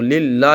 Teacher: اللہ کے لام کو باریک پڑھیں گے ہم، اس لیے کہ اللہ کے لام سے پہلے حرف پر زیر ہے تو للہ ہی اس کو باریک پڑھیں گے۔